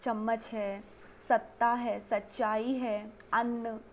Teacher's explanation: ये सारे शब्द ऐसे हैं जिसमें न, म, च और त इनका उच्चारण डबल हो रहा है। तो इन दोहरे उच्चारण के कारण एक बार त आधा आएगा, एक बार त पूरा आएगा, और इसी तरह से एक बार न आधा, फिर एक बार पूरा म आधा और एक बार न पूरा आएगा। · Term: द्वित्व व्यंजन